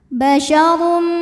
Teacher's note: Huruf ro dibunyikan secara tafkhim sebab berbaris di atas yaitu dommah maka dibacanya tebal.